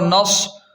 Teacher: صاد کو خوب موٹا پڑھیں، پر پڑھیں